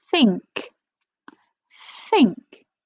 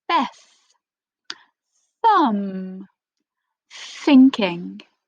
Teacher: you can feel a bit of air coming out your mouth and your tongue does touch your teeth